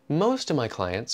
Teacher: we take out the v in of